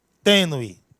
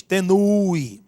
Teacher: Ninguém diz tenue, não, tenue. Esse E, ele sobressai sobre o U. Então, esse E, ele é vogal.